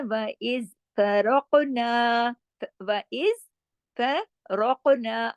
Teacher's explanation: را کنڈیشنل موٹا ہے اس لیے کہ را پہ زبر ہے، اور قاف کے اوپر کلکلا بھی ہے اور قاف جو ہے موٹا حرف بھی ہے · فا باریک ہے، را موٹا پڑھا جائے گا، را کی کیونکہ زبر ہے اس لیے